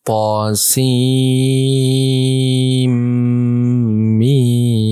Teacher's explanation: ta-nya 2 harokat, sin-nya 6 harokat, mim-nya juga 6 harokat.